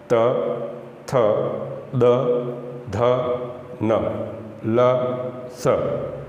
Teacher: अब इन वर्णों का जब अपन उच्चारण करेंगे तो हमारी जिह्वा है वो कहाँ टकराएगी, दांतों से